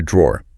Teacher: listen to that dr sound. In American English, it often kind of blends into a J sound like jaw.